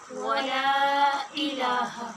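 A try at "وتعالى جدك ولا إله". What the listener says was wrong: ولا اس کو لمبا کریں گے اور ایلا نہیں پڑھیں گے، حمزہ زیر ای، بس جیسے میں نے زبر کی مشق آپ کو کروائی تھی، اس کلاس میں سبق ہوا ہے نہیں؟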